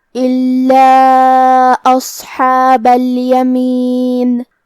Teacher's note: حرف اللام پہ تشدید ہے تو ہم دو حرف کے برابر حرف اللام کو پڑھیں گے کیونکہ تشدید کی اصلیت دو حرف ہے.